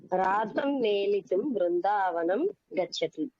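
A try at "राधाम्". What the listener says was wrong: రాధం కాదండి, రాధాం. థా దీర్ఘ ఆకారంత స్త్రీలింగం కదా, రాధాం.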